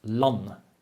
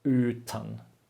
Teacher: you can hear that land should be short, uten should be long.